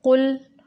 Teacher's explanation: कुल काफ को मोटा पढ़ना है और काफ के ऊपर पेश है तो पेश की अदायगी के वक़्त होंठों को गोल करना होता है। लाम को साकिन करते हुए कलकला नहीं करना और लाम को बारीक पढ़ना है।